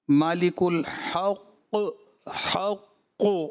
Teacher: مالک الحق حق قاف کی ہی آواز رہنے دیں، عین کو مکس نہیں کریں اس میں